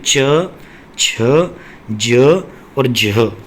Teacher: इनमें एक अजीब सी घिसघिसाहट की सी आवाज़ आती है, सिर सिर की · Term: स्पर्श संघर्षी